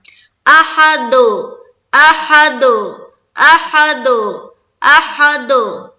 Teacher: قلقلہ جب ہم کرتے ہیں تو ہماری آواز ٹکراتی ہے اور الگ الگ ساؤنڈ آتا ہے. گویا ایسا لگتا ہے کہ ہم 2 حرف ادا کر رہے ہیں، دال کو ہم ڈبل ادا کر رہے ہیں. اس طرح کی آواز آئے گی، ایکو ٹائپ کا ساؤنڈ سنائی دے گا.